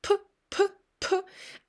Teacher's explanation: airflow is going it's pretty weak airflow which goes through your lips